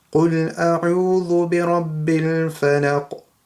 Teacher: there's a qaf at the end, so that's qalqala, means echoing sound right at the end